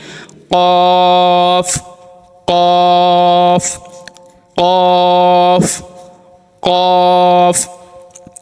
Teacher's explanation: জিহবার গোড়া তার বরাবর উপরে তালুর সঙ্গে লাগিয়ে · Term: দুই নক্তাওয়ালা কফ